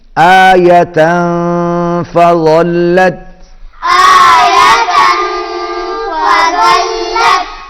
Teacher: آیۃ تنوین کے بعد فا ہے، اخفا ہوگا، آواز ناک میں جائے گی